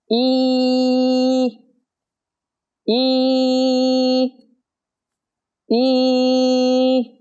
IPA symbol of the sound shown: i: